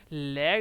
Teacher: ठीक है, लय जब आप उच्चारण करते हैं, इसके उच्चारण में हवा क्या करती है, पार्श्व यानी कि बगल से हवा जो है निकल जाती है, इसको हम क्या बोलते हैं, पार्श्विक बोलते हैं।